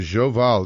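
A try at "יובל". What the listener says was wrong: Actually, it's not Juval with a J. It's Yuval with a Y.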